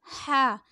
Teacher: یہ حلق سے نکلے گا ہا، اور یہ سختی سے پڑھا جائے گا ہا